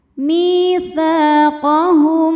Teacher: Sa hukumnya sama ya, mad tabi'i dhahiri. Sebab ada alif yang sebelumnya berbaris fathah, maka huruf ta panjang 2 harokat.